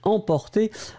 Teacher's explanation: m c'est une nasale il n'y a pas de voyelles après donc c'est vraiment une nasale